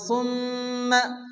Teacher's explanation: মিমের উপরে তাসদীদ মিম গুন্না ওয়াজিব